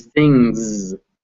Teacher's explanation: this word is written with an s at the end but the sound is actually a z